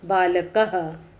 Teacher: विसर्ग का उच्चारण कंठ से किया जाता है